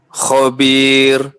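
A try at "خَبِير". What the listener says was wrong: Ya, ra-nya tipis. Khabir. Usahakan lebih tipis lagi.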